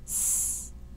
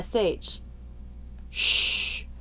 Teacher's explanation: For the s sound, the corners of my lips are either relaxed s or pull out s. This is different from the sh, sh, where the corners come in and the lips flare.